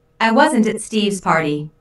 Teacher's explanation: Notice that the emphasis here is on at, although prepositions normally have weak stress. In this case, at means there, I wasn't there.